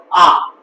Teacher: সংবৃত একটু কমছে, তুমি যখন আ উচ্চারণ করছো আ মানে একেবারে পুরো উদাত্ত কণ্ঠে, যেমন আ মানে একেবারে মুখ মানে ওষ্ঠ প্রসারিত করে মুখ খুলে তুমি উচ্চারণ করছো আ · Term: বিবৃত